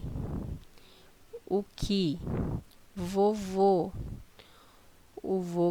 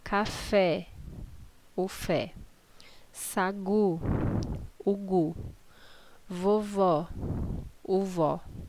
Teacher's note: a maioria delas a sílaba tônica é a última